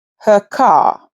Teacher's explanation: Without a following vowel, the R stays silent.